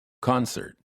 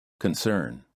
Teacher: The first word has a stressed first syllable, and the second word has a stressed second syllable. In the first word, the C-O-N sounds like con, and in the second word, the C-O-N sounds like kun.